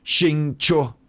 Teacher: second tone and then first tone